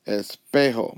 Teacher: My voice went up on the second to last syllable.